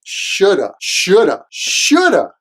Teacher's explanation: usually in conversation, the v at the end is unstressed. So should've sounds like shoulda, shoulda, shoulda.